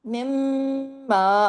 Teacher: میم مشدد کی وجہ سے، ڈبل میم کی وجہ سے غنہ ہو رہا ہے